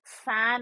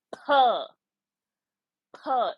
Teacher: So we have a ph sound and not actually f sound